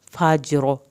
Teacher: جیم کا کلکلا کر کے روا کو پر کر کے پڑھنا ہے. سلام ہی حتی مطلع الفجر.